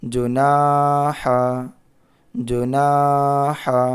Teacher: یہاں پہ الف مدہ ہے، الف سے پہلے زبر ہے، یہاں پر الف مدہ ہے۔ تو نون کو تھوڑا کھینچ کر کے پڑھیں گے